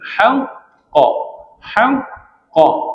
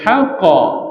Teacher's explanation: Ha qalqalah akbar istilahnya iaitu bunyi qalqalahnya ditekan dulu bagi huruf qaf sabdunya kemudian baru keluar sifat lantunan